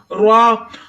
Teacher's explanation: را کو موٹا یعنی پر پڑھیں گے، را کے اوپر زبر ہے، بغیر کھینچے پڑھیں گے